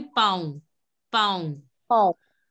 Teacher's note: You don't have to pronounce the last N. It has to be the nasal sound.